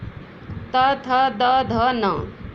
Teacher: ये दंत्य जाति से होते हैं और इनको त वर्ग में रखा गया है